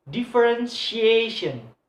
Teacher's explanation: So the stress in the word placed on the second syllable from the last one